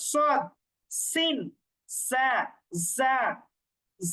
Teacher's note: জিহ্বার আগা সামনের নিচের দুই দাঁতের আগার সঙ্গে লাগিয়ে সদ সিন সা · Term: 12 নম্বর মাখরাজ